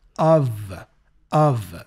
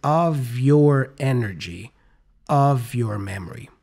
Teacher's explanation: the F for the preposition of here sounds like a V